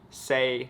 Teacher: in cantonese the number four is the middle flat tone